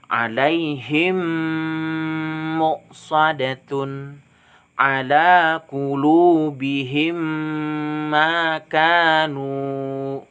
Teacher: Nah, jadi membacanya tuh harus berdengung. Ingat mim sukunnya digabungkan dengan mim selanjutnya itu dibaca berdengung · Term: idgham mimi